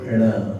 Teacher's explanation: एक मूर्धन्य वर्ण वाला ण होता है, जिसमें जीभ का उल्टा भाग तालू से रगड़कर आगे तक आता है